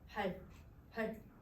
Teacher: 활 낮게 낮은 소리로 냈을 거야